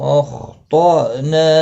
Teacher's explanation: حمزہ ساکن کو جھٹکے کے ساتھ پڑھا جائے گا، نا الف مدہ ہے، ایک الف کی مقدار کے برابر کھینچ کر کریں گے، وقف کی صورت میں بھی اور ملانے کی صورت میں بھی۔